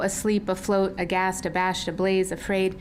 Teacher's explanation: the A adjectives with the unstressed schwa at the beginning